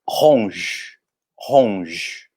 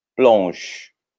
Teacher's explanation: A gente não vai dizer ronger ou ronger, é ronge. Aquele G é como se tivesse um som de J e para ali mesmo. E a mesma coisa para o plonge.